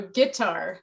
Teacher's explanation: guitar is kind of unusual in English with its stress pattern because it doesn't have that initial stress